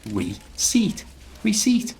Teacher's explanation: not to pronounce the P and then just pronounce it in two parts. Re and seat, like what you sit on.